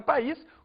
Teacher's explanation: a gente tem o i sendo pronunciado separadamente com uma força própria